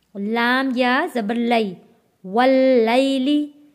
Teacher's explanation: واو جڑے گا تشدید والے لام کے ساتھ